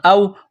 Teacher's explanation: حمزہ واو زبر او، واو ساکن سے پہلے زبر ہے، حروف لین واو ہے، اس کو نرمی کے ساتھ جلدی پڑھیں گے، کھینچنا نہیں ہے